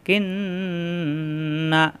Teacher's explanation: সাথে কিন নুন জবর না কিন্না গুন্না করলাম কেন আমরা জানি নুনে মিমে তাসদিদ গুন্না করা ওয়াজিব তাহলে এখানে গুন্না করতে হবে অর্থাৎ একটু ধরে রাখতে হবে